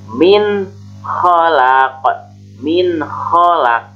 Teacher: cara membacanya adalah menjelaskan suara nun mati atau yang disebut nun sukun atau tanwinnya tanpa ditambahkan suara dengung. Jadi ketika ada nun yang sukun atau nun mati atau ada tanwin menghadapi huruf hijaiyah yaitu huruf idhar, maka ketika nun mati ataupun tanwin menghadapi huruf idhar, maka membacanya harus jelas, jangan didengungkan.